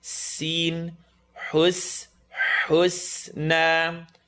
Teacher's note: So it's going to go oo, and then the seen, tip of the tongue, bottom teeth.